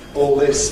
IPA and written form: ɔːl ˈlɪs (all this)